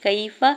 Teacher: یا ساکن سے پہلے کاف کے اوپر زبر، یا لین ہو رہا ہے، نرمی سے موڑتے ہوئے ادا کرنا ہے، کھینچنا نہیں ہے